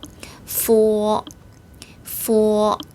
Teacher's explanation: 영어의 F 발음과 발음이 비슷하다고 생각하시면 됩니다. 윗니를 아랫입술에 살짝 댔다가 떼면서 발음을 해요.